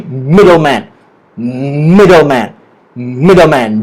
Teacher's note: The stress is on the word mid.